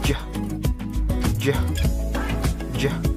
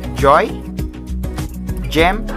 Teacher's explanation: The alveopalatal consonants are articulated with the blade of the tongue behind the alveolar ridge and the body of the tongue raised toward the palate